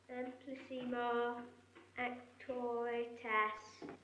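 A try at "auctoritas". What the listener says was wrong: Not as. Arse. Lord knows you should be able to pronounce that.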